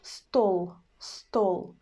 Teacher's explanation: It is consonant in the very end of the word, consonant letter, which is hard sound. We pronounce L in the end hard.